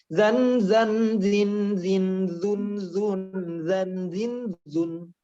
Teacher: Mau dia kasrah, mau dia dhammah, tetap bacanya di ujung lidah za.